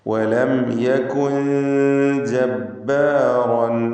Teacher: യകുൻ എന്നതിലെ സാക്കിനത്തായ നൂൻ ശേഷം ജീമ് വന്നതുകൊണ്ട് ഇഖ്ഫ ഹഖീഖി നൽകി മറച്ച് മണിച്ചുച്ചരിക്കണം. ജീമ് ഇഖ്ഫാൻ്റെ 15 അക്ഷരങ്ങളിൽപ്പെട്ടതാണ്.